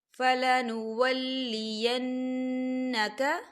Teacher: دیکھیں نون مشدد ہے تو یہاں پر غنہ ہوگا